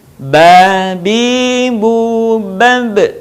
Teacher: Melafalkan huruf Ba, caranya dengan merapatkan dua bibir kita, tidak jauh berbeda sebagaimana kita mengucapkan huruf B dalam huruf Latin.